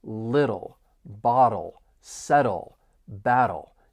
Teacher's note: I'm going to pronounce little with a flap T because the T's follow a vowel sound and then come before a dark L.